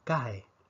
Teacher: una secuencia de dos vocales abiertas automáticamente forma dos sílabas separadas no es un diptongo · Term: hiato